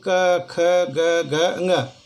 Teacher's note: कंठव्य क्योंकि इसका उच्चारण कंठ के ध्वनि से होता है, इसलिए कंठव्य कहा जाता है।